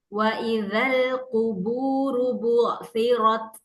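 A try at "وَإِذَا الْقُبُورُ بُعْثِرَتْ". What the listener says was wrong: Runya pokoknya semua ro yang dibaca tebal tebalkan, angkat pangkal lidahnya. Wa idzal quburu tebalkan.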